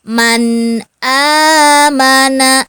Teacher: harus dibaca jelas tidak didengungkan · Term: Izhar